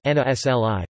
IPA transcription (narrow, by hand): nʲaˈslʲi